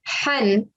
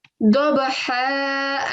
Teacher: But because we are pausing now, we're saying dabaha, and we're stretching the sound out for 2 seconds towards the end. So what's happened is that one stroke of the tanveen, of the fathatain, has now vanished.